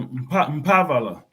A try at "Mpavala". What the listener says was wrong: We M is there because of the tone. Kikongo is a tonal language, so nasal. Pavala. That's what I say. Pavala. You don't read M. No, Pavala.